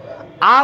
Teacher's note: আ উচ্চারণ করার সময় ঠোট অনেক বেশি ফাঁকা হয়ে যায়। এটাকে আমরা বলছি বিবৃত।